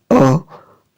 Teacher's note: अ का उच्चारण कंठ से होता है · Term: कंठ वर्ण